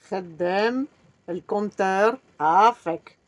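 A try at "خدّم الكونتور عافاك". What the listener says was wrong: Khaddem, le compteur, afak. Il ne faut pas prolonger dem, c'est dem. Khaddem, le compteur, afak.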